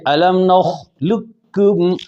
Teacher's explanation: لام سیدھا کاف سے ملے گی، قوف کی موٹا ہونے کو باقی نہیں رکھیں گے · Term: تام